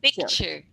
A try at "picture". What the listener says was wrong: you're saying picture, but not pick.